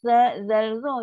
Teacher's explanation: Lepas tu kalau huruf tha, zal, za ni keluar pada gigi sikit. Tu kena gigi kan, gigi kapak tu.